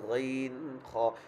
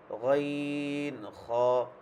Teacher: 3 নম্বর মাখরাজ হলকের শেষ হতে গাইন খ। আমাদের গলার মধ্যে এই একদম শেষটা শেষ, তখন এই জায়গা থেকে মনে হয় যে আমার যদি এটা গাইন খ আমি নিচে ধরি আমার সাউন্ডটা সমস্যা হবে না, এই জায়গায় ধরলে এটা সাউন্ডের সমস্যা হবে।